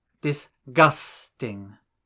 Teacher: example the English word dis disgusting has three syllables disgusting and it is the second syllable which is stressed